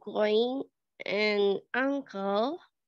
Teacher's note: the ‘n sound’ in these words is NOT made at the alveolar ridge, which is why it is distinct from /n/ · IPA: /ŋ/